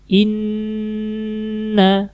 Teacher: yang paling gampang terlebih dahulu yaitu yang pertama yaitu Nun bertasdid kalau ada Nun yang bertasdid maka dia selalu gunah selalu ditahan gitu ya contoh bacaannya seperti ini Inna jadi di nunnya ditahan · Jadi di nunnya ditahan dulu, di huruf nunnya ditahan, karena ada tasdidnya nunnya ya